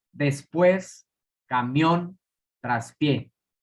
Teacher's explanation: Son agudas porque llevan su sílaba tónica en la última sílaba y terminan en N, S o vocal, por lo tanto llevan tilde.